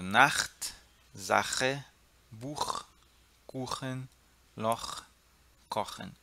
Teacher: É bem arranhada. A garganta tem que arranhar. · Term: CH com som de R